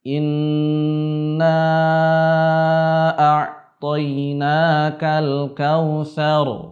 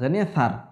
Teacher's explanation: Ya, contoh kesalahan yang umum sekali terjadi adalah tatkala kita misalkan membaca surat Al-Kautsar. Akhir dari surat Al-Kautsar seharusnya kita baca dengan tebal semua huruf ro.